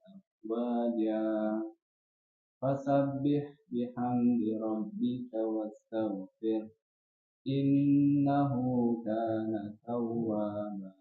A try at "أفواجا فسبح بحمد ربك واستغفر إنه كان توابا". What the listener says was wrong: Sudah bagus, cuman lebih dilatih lagi untuk membuka mulutnya. Jadi ketika 3 harokat itu kan berpengaruh itu kan. Ketika fathah dia mengap, ketika kasrah dia turun rahangnya, kemudian ketika domah manyun bibirnya. Nah, itu perlu dilatih memang supaya pengucapan hurufnya menjadi lebih maksimal.